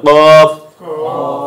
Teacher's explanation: জিহ্বার গোড়া উপরে তালুর সঙ্গে লাগে কি হলো কফ।